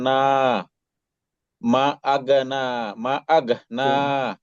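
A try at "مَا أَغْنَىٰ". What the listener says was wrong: মা একটু টান দেন ভাই, এক লিপ টানেন, মা আগ না।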